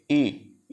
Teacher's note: ई जो हो रहा है जीभ का आगे भाग से हो रहा है